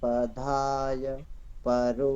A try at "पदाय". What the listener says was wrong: पदाय, दा को आप धा पढ़ रहे हैं, पदाय।